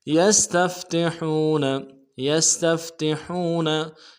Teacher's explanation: सीन की सीटी बारीक होगी, ता को नरम से अदा करेंगे , फा के साथ मिलाएंगे, अगले ता को नरम से अदा